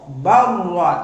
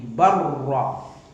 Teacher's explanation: Tekan ke bunyinya ke ra. Barra, jadi lamnya hilang. Idgham mutaqarribain ini, lam dan ra ini berdekatan makhrajnya ini.